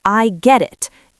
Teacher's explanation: But in British English and often in American English, that T sound changes or disappears to link the words together. In London, we might use a glottal T. We say, "I get it." It happens in the back of the throat.